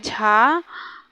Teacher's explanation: तालव्य झ महाप्राण घोष है